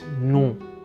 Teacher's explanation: there's a slightly nasal N at the end